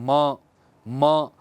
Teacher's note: तो म बोलने में या न बोलने में आपका पूरा का पूरा जोर कहाँ जा रहा है, नासिका में। इसलिए म, न, इनका उच्चारण हम नासिका से करते हैं।